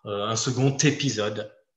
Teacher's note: si on fait une liaison, second va être prononcé avec un T à la fin, donc le même qu'à la fin de petite.